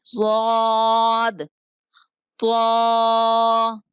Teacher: ضاد کا مخرج زبان کی کروٹ اور اوپر کی 5 داڑیں ضاد کا مخرج ہے۔